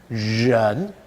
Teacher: move the tongue up to the roof of the mouth, the front of your tongue, so you can hear the friction, that's very key, and the sides of the tongue touching the sides of the mouth. · But what you need to tell your students is that their tongue should move upwards. The tongue tip should be up and the sides of the tongue touching the sides of the mouth. What you find is that students will often substitute an English R, as in red or ready.